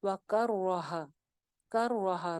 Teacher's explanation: را زبر کے ساتھ ہے، موٹی ہو جائے گی ، را کے اوپر شد بھی ہے، کر اینڈ دین را،